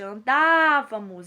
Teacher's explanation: Andávamos é uma proparoxítona. Olha só, é a antepenúltima sílaba que é a mais forte